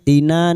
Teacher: Alif kecil di atas dua harakat mad thabi'i. Tina na fathah diikuti alif dua harakat kita panjangkan mad thabi'i